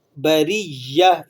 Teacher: شر البریہ، را کو موٹا کر لیں گے اس لیے کہ را کے اوپر حرکت ہے، اور بریہ، یا کو آپ سختی کے ساتھ ادا کریں گے کیونکہ یہاں پر یا کے اوپر شد لگا ہوا ہے